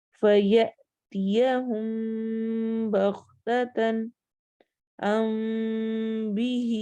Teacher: اخفا، میم کی آواز کو چھپائیں گے، کب؟ جب اس کے بعد با آ رہا ہوگا، اور با کسی بھی حرکت کے ساتھ آ سکتا ہے۔